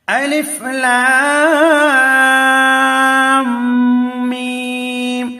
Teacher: تو ہم نے جو یہاں الف لام پڑھا ہے، لام کے اوپر مد ہے، میم کے اوپر بھی مد ہے، میم کے اوپر تشدید ہے، تو یہاں غنہ کریں گے اور کھینچ کر بھی پڑھیں گے